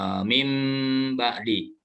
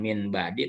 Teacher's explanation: Ketika bertemu dengan ba, maka cara membacanya adalah diganti bunyi nun matinya dengan mim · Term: iklab